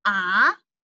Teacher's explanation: you rise from the lower pitch to the higher pitch, which is pronounced as ah. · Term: second tone